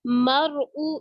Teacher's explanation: را موٹی پڑی جائے گی، کیوں؟ کیونکہ را ساکن اور اس سے پہلے زبر آ رہی ہے